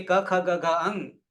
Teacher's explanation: ક ખ ગ ઘ અંગ આ પાંચ વ્યંજન કંઠ માંથી નીકળે છે અને એને ક વર્ગ કહીશું પહેલા વર્ણના આધારે વર્ગનું નામકરણ ધાતુઓમાં